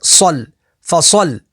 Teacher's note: صاد حروف مستعلیہ میں سے تو اسے پور یعنی موٹا پڑھیں گے، لام کے اوپر تشدید ہے تو تشدید والے حرف کو 2 دفعہ پڑھیں گے